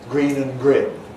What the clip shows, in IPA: griːn